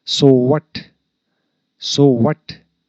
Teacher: this is rising intonation because we have put we have stressed the word what